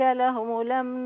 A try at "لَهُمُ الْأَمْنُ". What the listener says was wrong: بس عايزة بين الضمة لهم الأمن